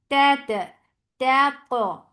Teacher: This qa should be heavy and it should have a nice qalqala.